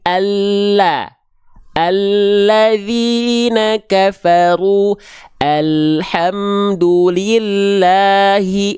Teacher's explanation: huruf lam itu dilafalkan dari samping lidah tapi bukan seluruh samping lidah samping lidah bagian depan dan samping